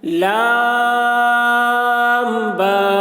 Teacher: لام کو زیادہ کھینچ رہے ہیں، با کو کم، کیونکہ با 2 حرف سے مل کر بنا ہے۔